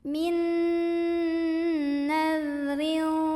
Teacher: tanwin kasrah ini dibunyikan samar-samar mau bilang fa sambil dengung. · Ra dibaca secara tarqiq karena ra berbaris di bawah. Maka bacanya tipis, ringan, tanpa harus mengangkat pangkal lidah kita. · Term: ikhfa ausat